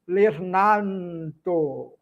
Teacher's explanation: O N sai naturalmente sem eu nasalizar